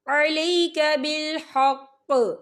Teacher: تلک آیات اللہ نتلوہا علیک بالحق، یا دیکھیں آپ کو چھوٹی سی توئیں لکھی نظر آ رہی ہے، تو یہ پھر مطلق کی علامت ہے، تو یہاں پر ٹھہرنا بہتر ہے۔ وقف کی صورت میں قوف جو ہے ساکن ہو جائے گا، اور یہاں پر قلقلہ بھی ہوگا